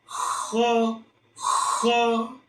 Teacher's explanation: huruf ko udara dulu yang keluar. baru suara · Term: hams, huruf kha